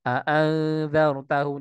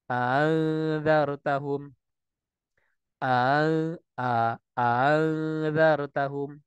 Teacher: Hamzah yang kedua di tashil